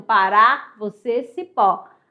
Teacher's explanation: A sílaba tônica, ó, é a última para ser oxítona